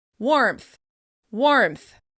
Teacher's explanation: The insertion of the p sound also happens in the word warmth. Many people add a p sound before the final th in order to make it easier to say.